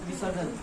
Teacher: नियमानुसार यहाँ पर शे होना चाहिए, मूर्धन्य शकार होना चाहिए, परंतु यहाँ पर दंत्य सकार ही रहेगा, तो रह जाएगा विसर्जन।